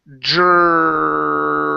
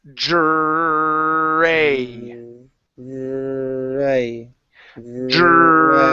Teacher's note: focus on that J sound, then move into the R, and then focus holding the R for a long period of time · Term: JR sound